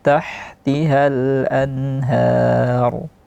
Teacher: Har yang terakhir itu ro-nya tebal, ha-nya tipis.